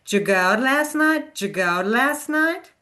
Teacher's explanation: So we even drop the did sound. It becomes just ja.